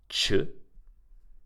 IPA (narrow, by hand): t͡ʃ